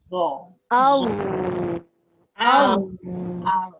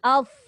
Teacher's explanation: Jangan keluar angin. Dha tidak ada angin tapi dia ada suara yang dilepaskan.